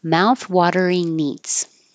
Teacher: instead of the inging in the back like sing I'm changing it to in with the tongue in the front for the in and then that will connect to the eats